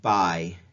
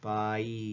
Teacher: they exhibit a change in quality that seems to glide between two sounds in a single syllable · So when you buy something, right, that I sound, notice that it's, if you pay attention to it, it feels like it's two different sounds, but we still have one syllable. Those sounds glide together. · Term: major diphthong